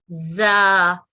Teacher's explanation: اس کا مخرج اور سین کا مخرج ایک ہی ہوتا ہے, دانتوں کو جوڑتے ہوئے آواز آتی ہے